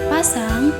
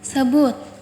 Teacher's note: bunyi bilabial, yang dimana terdapat pertemuan antara bibir bawah dan bibir atas, dan keduanya berperan sebagai artikulator aktif